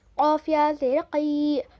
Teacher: یا پر جزم ہے یا ساکن. یا ساکن سے پہلے زیر یائی مدہ تھوڑا کھینچ کر پڑھیں گے